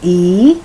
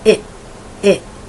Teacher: one is the long e sound e and the other is the short i sound